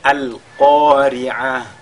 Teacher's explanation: lorsqu'on marque donc une pause sur ta marbuta, n'est-ce pas? On le lit comme un ha.